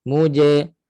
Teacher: Makhraj jim di mana? Tengah lidah. Naik tengah langit, sentuh.